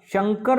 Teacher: शंकर बोलूंगा तो श का उच्चारण तालव्य से होगा